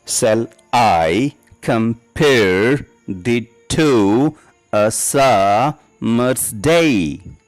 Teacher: সেই 5টা ফুটের প্রত্যেক প্রথম সিলেবলটি আনস্ট্রেসড হবে এবং দ্বিতীয় সিলেবলটি স্ট্রেসড হবে · It consists of a line of 5 iambic feet, 10 syllables, 5 unstressed and 5 stressed. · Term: আয়াম্বিক পেন্টামিটার